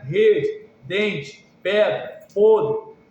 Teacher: elevação do dorso em relação ao palato fica no nível médio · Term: Mediais